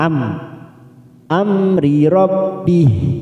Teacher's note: mim sukun bertemu ro Idhar syafawi kita baca jelas tanpa mendengung